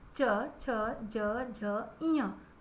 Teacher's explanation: जो हमारी जीभ होती है ना, वो तालु को टच करती है, छूती है, इसलिए इसे तालव्य कहते हैं